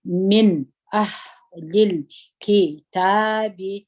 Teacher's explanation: من دلته مو نون اظهار کوي ولې مو اظهار کوي همزه په پسې دي